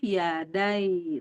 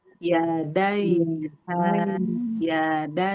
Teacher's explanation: walaupun dia sukun, dia tetap harus ke makhraj ya. Yaitu tengah lidah nempel ke langit-langit, cuman enggak dikasih harakat begitu ya. Tetap aja itu tuh naik gitu yadai tuh tetap nempel tengah lidah ke langit-langit yada.